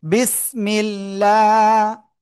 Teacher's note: মিম লামজের মিল, লাম খাড়া যাব লা, আল্লাহ শব্দের লামের ডাইনে জের চিকুন করে পড়তে হবে।